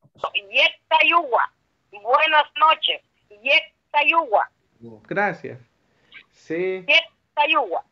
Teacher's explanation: es con un + una vocal y generalmente suele ser la vamos a meter en medio una w o vamos a alargar la u entonces como que fuera una w